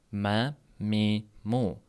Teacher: Bu ikki lablar va dimog'. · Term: mim harfi